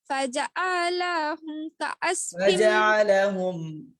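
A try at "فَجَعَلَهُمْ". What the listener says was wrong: ফাজআলা কোথাও টান নাই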